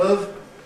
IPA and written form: əv (of)